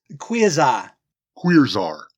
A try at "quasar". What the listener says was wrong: there's no letter r in the first syllable